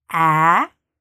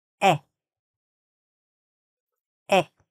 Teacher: The problem is, if you don't say this short A properly and open your mouth, then it's going to end up sounding like a short E.